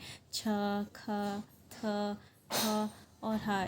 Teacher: तो इन सब में हा की साउंड आ रही है, एच की साउंड आ रही है, तो ये होते हैं एस्पिरेटेड साउंड्स। एच एस्पिरेट को कहते हैं, और जिन साउंड्स में एच आ जाता है उनको एस्पिरेटेड साउंड्स कहते हैं।